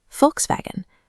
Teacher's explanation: We call it a Volkswagen, but in German, that V at the beginning is an F and the W is a V